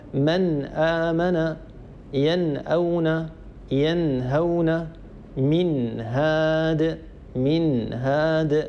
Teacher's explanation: لاحظوا أن النون الساكنة الجزء اللساني منها موجود، وأيضا الجزء الخيشومي منها موجود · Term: حكم الإظهار